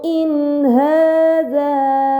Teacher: harakat Kemudian pada kata in Haza ini dinamakan izhar halq karena nun sukun bertemu dengan huruf ha maka nun sukun harus dibaca secara jelas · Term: izhar halqi